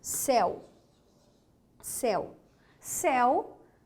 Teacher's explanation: céu é uma palavra monossílaba monossílaba formada por um ditongo aberto por isso é acentuada né réu réu olha